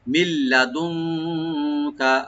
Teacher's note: মাঝখানে যে নুন সাকিন আছে এখানে আমরা ইখফা করব, লাইট গুন্না করব